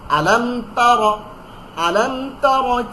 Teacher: র জবর রা না কিন্তু, র মোটা করে